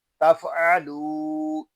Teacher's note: आइन जो है ये हलक के दरमियान वाले हिस्से से अदा होगा। जब हम आइन को अदा करेंगे तो हमारा हलक थोड़ा सा घूमेगा। लाम को एक अलिफ तक खींच कर पढ़ेंगे क्योंकि यहाँ वाव मद्दा हो रहा है।